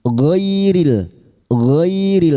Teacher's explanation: huruf gin yang berharakat fathah bertemu ya sukun kita lunakkan huruf lin